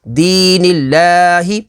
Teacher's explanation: یا ساکن سے پہلے زیر ہے تو یا مدہ ہوگی. اس میں جلالت اللہ عز و جل کے لام سے پہلے زیر ہے تو اس میں جلالت اللہ عز و جل کے لام کو باریک پڑھیں گے. لام کھڑا زبر لا، دین اللہ، ہا زیر ہی، دین اللہ.